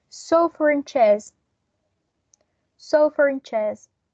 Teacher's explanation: So in this case, we are going to link these two words together, including this intrusive R